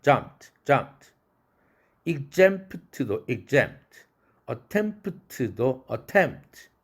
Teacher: 빨리 발음하게 되는 경우는 대체적으로 프가 날아갑니다